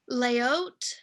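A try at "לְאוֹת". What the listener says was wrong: Le, not lay. Le oat.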